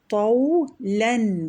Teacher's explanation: طولن میں تو جو ہے وہ تفخیم ہے اور لام ترقیق ہے